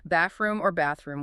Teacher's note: The second th in the compound word bathroom is often just silent or sometimes the whole th just kind of collapses into a soft m sound or it's simply dropped.